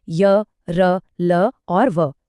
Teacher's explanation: इन्हें बोलने में जबान मुंह के किसी भी हिस्से को पूरी तरह से नहीं छू रही · इनको बोलते हुए जीभ उच्चारण की जगह के पास तो जाती है, पर उसे पूरी तरह से छूती नहीं है। इसीलिए इन्हें अप्रॉक्सिमेंट भी कहते हैं। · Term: अंतस्थ व्यंजन